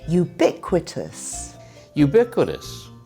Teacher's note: So it starts with a y sound. And it has 4 syllables.